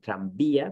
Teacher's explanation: Pero claro, podemos tener palabras como tranvía, donde hay una V, ¿no?, escrita, pero realmente no pronunciamos tranvía, pero sí pronunciamos tranvía con B digamos, fuerte, oclusiva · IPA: [b]